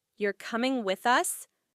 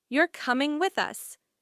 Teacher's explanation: if you say, You're coming with us, with a rising tone, it sounds like a question